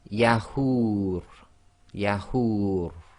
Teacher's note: the ra will go sakin, so the dummah wow long vowel sound can go 2, 4 or 6 long